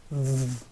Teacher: The tip of your tongue should be between your teeth. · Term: emphatic